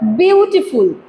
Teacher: তো প্রথম সিলেবলটা হবে হচ্ছে স্ট্রেসড, পরের দুটো হবে হচ্ছে আনস্ট্রেসড। বিউটিফুল বলার সময় বিউটার উপরে বেশি ফোকাস, দেন টি, দেন ফুল, লাস্টের দুটোর উপরে কম ফোকাস হচ্ছে। ঠিক আছে, এই যে দেখো, বিউটা হচ্ছে স্ট্রেসড কারণ এর মধ্যে বেশি ফোকাস পড়ছে, আর টি ফুল যে দুটো আছে দুটো কিন্তু আনস্ট্রেস।